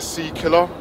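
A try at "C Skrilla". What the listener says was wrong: And I told you, the name's sea Skrilla. No. You said, sea killer.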